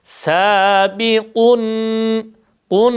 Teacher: ağzımızı açarak dört elif miktarı uzatarak eee kelimeyi bitirmiş oluyoruz.